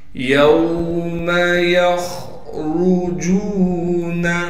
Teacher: خا کو موٹا کر کے پڑھنا ہے اس لیے کہ خا موٹے حروف میں سے ہے · را کو موٹا کر کے پڑھیں گے اس لیے کہ را پر پیش ہے